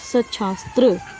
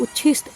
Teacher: त के बाद यदि श हो तो त का च और श का छ हो जाता है।